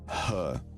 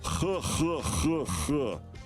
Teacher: They put a tiny little bit of that uvular trill at the beginning of it.